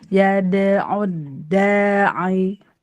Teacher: enggak, yad'ud da-nya aja yang panjang. Ini mah dal tasdid, dia tidak rohowah, dia syiddah.